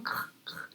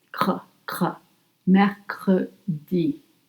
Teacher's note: The tongue is in the bottom, cr, cr, and all the way in the back. Doesn't touch the front and the teeth.